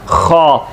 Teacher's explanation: खौ भी हलक से है, खरखराहट के साथ, यानी कि खा नहीं पढ़ना, खौ।